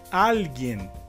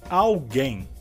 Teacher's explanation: em espanhol, a palavra alguien, a sua sílaba mais forte seria al, e em português, na palavra alguém, a sílaba mais forte seria gen